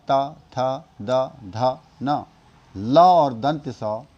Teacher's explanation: इनका उच्चारण करने में दंत की सहायता लेनी पड़ती है या दांतों के अंतिम भाग से इनका उच्चारण होता है इसीलिए